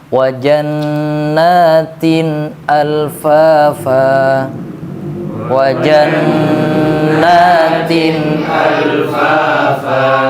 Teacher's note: Kemudian jangan dihilangkan wajannatin alfafa. Nunnya kayak seolah-olah mau hilang. Tidak hilang. Bahkan harus jelas. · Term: izhar